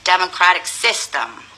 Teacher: when you say democratic system, itu nanti harus ada tekanan yang lebih besar di sis.